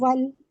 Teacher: آگے حمزۃ الوصل ہے، اس کو ڈراپ کر کے لام کے ساتھ ملا دیں گے